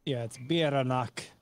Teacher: And then the double R is rolled.